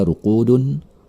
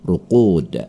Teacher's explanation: Karena berada di ujung kata, maka bunyi pantulannya dipantulkan dengan pantulan besar. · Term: qalqalah